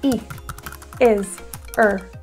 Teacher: another very common reduction in English especially North American English is the deletion of the H sound in words like he his her